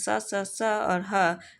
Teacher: स स स और ह का उच्चारण करते समय हवा घर्षण के कारण उष्म होकर बाहर निकलती है अतः इन्हें उष्म व्यंजन कहते हैं क्या कहते हैं उष्म व्यंजन